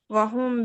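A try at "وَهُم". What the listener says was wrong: ওয়াহুম গুণনা করতে হবে মিম সাকিনে গুণটা করেন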